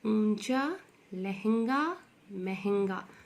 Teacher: उच्चारण मुंह से भी निकल रहा है और नाक से भी निकल रहा है। · तो चंद्र बिंदु का उच्चारण कैसे करते हैं, मुख और नाक दोनों से इसका उच्चारण निकलता है